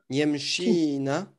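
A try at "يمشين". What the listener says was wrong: C'est un verbe, ouais. Yemshina, ouais. Ina, du coup, il faut rajouter.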